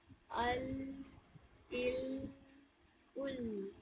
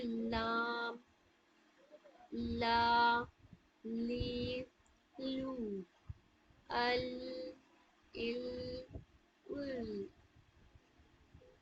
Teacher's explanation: तो ये टर्म ज्यादा याद नहीं रहेगी, तो आप क्या करिए, आप इतना याद रखिए कि सामने की 8 दांतों की जड़ों को टच करती है। जुबान का जो सामने वाला हिस्सा है, front part of the tongue, हम पढ़ रहे हैं, तो वो क्या करती है, सामने वाले दांतों के 8 दांतों की जड़ों में टच करती है।